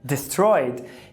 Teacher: é bem comum as pessoas falarem destroyed com o schwa e não com o i relaxado